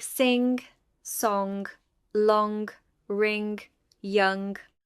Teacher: Ing is the velar nasal. It occurs in words like sing, song, long, ring, young. It does not occur at the beginning of words in English.